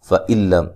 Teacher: یہاں نون ساکن کا ادغام ہے لیکن بلا غنہ ہے، غنہ نہیں کریں گے